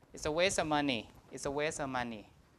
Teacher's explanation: sometimes in of, the V is also deleted, so you have only a schwa